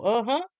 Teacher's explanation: With the accent on the last syllable. Uh-huh. While a closed uh uh emphasis on the first syllable means no.